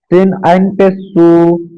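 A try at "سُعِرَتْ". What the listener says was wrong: হবে না। সিন আইন পেশ সু আইনটা ধরে রাখতে হবে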